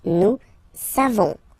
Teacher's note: Nous savons, so classic ending for nous, O-N-S, you don't pronounce the final S